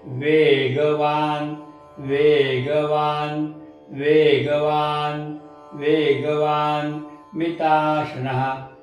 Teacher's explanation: वे दीर्घ ग ऱ्हस्व, वा दीर्घ न ऱ्हस्व मी ऱ्हस्व, ता दीर्घ ष ऱ्हस्व आणि नच्या पुढे विसर्ग. ऱ्हस्वचे उच्चार पटकन करायचे, दीर्घेचे उच्चार लांबवायचे.